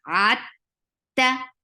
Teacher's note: For fatha, open your jaws, and the sound is very sharp, no flow of sound whatsoever.